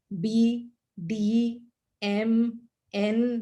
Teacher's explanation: the voiced ones are b d m n they are all coming from the throat